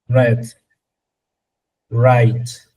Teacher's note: es mucho más suave y se articula sin vibración con la lengua ligeramente curvada hacia atrás